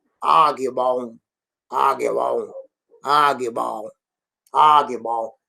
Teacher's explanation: Nós queremos vogal nasal. O N tem que ser vogal nasal na pronúncia.